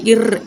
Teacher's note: அந்த நாவின் நுனி வந்து வருதல்னால பிறக்குது